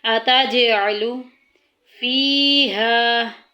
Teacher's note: قَالُوا أَتَجْعَلُ، أَتَجْ میں آواز گونج کے نکلے گی، جیم حروف کلکلہ میں سے ہے